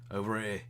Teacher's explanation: The way that British accents work, if he were to say over, he wouldn't pronounce the R, but if he would say over here, he would pronounce the R. Because too many vowels together doesn't quite work.